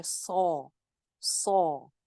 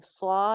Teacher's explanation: सौद मोटा हर्फ है, भरा हुआ हर्फ है और इसके ऊपर खड़ी जबर भी है। मोटा पढ़ेंगे, भरा हुआ पढ़ेंगे और इसकी जो खड़ी जबर जो एक अलिफ हमने लंबा करना है वहां तक इसको मोटा ही रखेंगे।